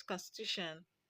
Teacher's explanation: The stress is on the second syllable from the end, which is the penultimate syllable.